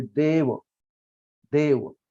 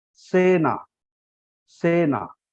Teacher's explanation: ए के आगे वह कंसोनेंट जो है वो सिंगल है, इसलिए हमने ए को जरा खींचा है, देव वो ऐसा खींचा है, मतलब जरा दीर्घ हमने उसका उच्चारण किया है, देव।